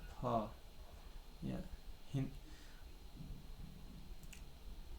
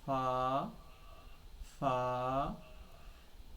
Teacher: ہے، اسے فا بولنا ہے، فا، فا کی آواز آئے گی۔ جو اوپر کا جو یہ دونوں دانت ہے، نیچے کے ہونٹ کا تری والے حصے سے ٹچ ہوگا تو دیکھیے نکلے گا فا، فا، یہ جو نیچے کا جو